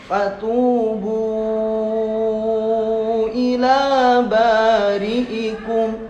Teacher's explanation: Nah, itu kalimat fatubu kalau waqaf di situ jadi mad asli. Fatubu dibacanya 2 harokat, tapi ketika wasol tetap jadi 5 harokat. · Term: mad jaiz panjang